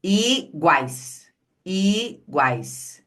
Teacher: O U e o I são pronunciados no mesmo movimento de boca do A. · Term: tritongo